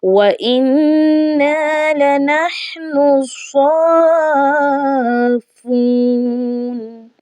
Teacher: مدہ کی یہاں پر جو علامت ہے یہ مد لازم ہے، تو ہم نے اس کو کیا کرنا ہے؟ 4 یا 5 الف کی مقدار ہم نے اس کو کھینچ کر ادا کرنا ہے · وَإِنَّا لَنَحْنُ الصَّافُّونَ. یہاں پر نون کو ڈائریکٹ ہم نے سواد کے ساتھ ملانا ہے. درمیان میں آنے والا الف اور لام یہ دونوں نہیں پڑھے جائیں گے.